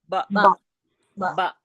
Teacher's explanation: दोनों होठों के गीले हिस्से से बा अदा होता है